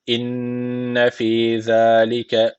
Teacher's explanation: Şedeli nun var. Mutlaka bir elif tutuyoruz.